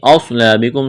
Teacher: من اصلابکم، من غنہ نہیں کریں گے، اظہار کریں گے، اصلابکم، صاد کو موٹا کرنا ہے، سیدھی کی آواز پیدا کرنی ہے، الف مدہ ہے، الف کے برابر کھینچنا ہے۔